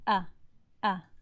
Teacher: the vocal cords completely come together leaving no space for air to come in or out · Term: hemza